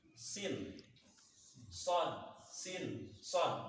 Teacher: Memang secara makhrajul tempatnya itu sama. Di ujung lidah ketemu pangkal gigi.